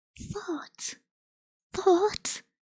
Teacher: my tongue is between my teeth when I say that